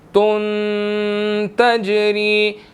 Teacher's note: نون ساکن کی ساؤنڈ آ رہی ہے، یہاں پر اخفا ہوگا